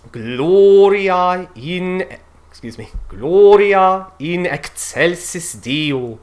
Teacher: And you'll also notice that with that positioning of the L, the O has a very vibrant, round, full quality